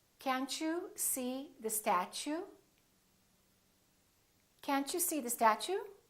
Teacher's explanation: When the T is followed by a U, it becomes chew.